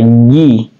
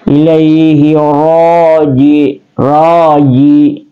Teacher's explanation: dia keluar di pertengahan lidah kita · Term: wastul lisan